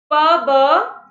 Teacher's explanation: Bilabial भी होने चाहिए, plosive भी होने चाहिए, right? P and b, where we are using both our lips, and because they are coming like an explosion, so they are plosives. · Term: Bilabial plosive